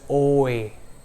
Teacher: in short the mouth opens twice one after the other or you can say we have two muscle movements one after the other and that leads to a dip thong two sounds so if